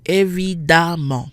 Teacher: the EM in the word for obviously, évidemment, is not nasal. We have a double M followed by a vowel.